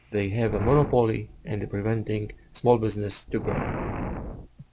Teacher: So you have a lot of pauses in between one or two words, another one or two words, another pause. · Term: choppy rhythm or pace